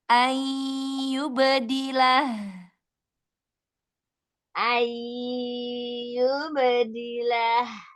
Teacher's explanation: Ee idgam ghunanya mau temponya lebih dilamakan lagi eng ya. Setengah ya itu setengah keluar dari mulut, setengah keluar dari hidung ya. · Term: Idgham bil gunnahnya